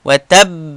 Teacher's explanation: زه پر با باندې د شد په وجه وخت تیروم